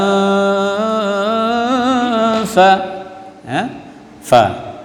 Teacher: ujung gigi depan atas dengan perut bibir sebelah bawah